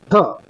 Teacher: बोलत असताना आपली जीभ वरच्या साईडने टाळूच्या मागे लागते त्यावेळेस आपण मृधन्य व्यंजन होत असते विद्यार्थी मित्रांनो आणि मूर्धन्य व्यंजन